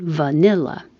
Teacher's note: V. Same as the F, but with voicing.